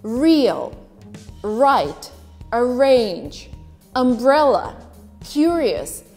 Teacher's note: in received pronunciation in great britain you would only pronounce the r that is followed by a vowel